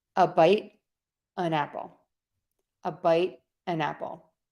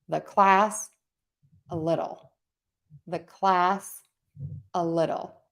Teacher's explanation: So you can see I'm unstressing that article, and then I'm connecting it to the vowel, to the noun I'm linking, and my noun is going to get the stress.